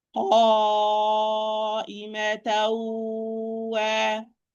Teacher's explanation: I'm going to produce the ghunna at the same time of pronouncing the waw. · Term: idgham naqis